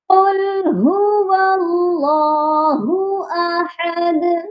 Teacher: سورۃ الاخلاص مکیہ، بسم اللہ الرحمن الرحیم، قل هو اللہ احد، اس میں دو ہاں، ایک ہو کا ہاں اور ایک اللہ ہو کا ہاں، دونوں ہاں کی ادائیگی سینے والے حلق سے ہوگی، اور احد اس والے ہاں کی ادائیگی درمیان والے حلق سے ہوگی، اور دال پر ہم قلقلہ بھی کریں گے کیونکہ دال حروف قلقلہ ہے اور اس پر ہم رک رہے ہیں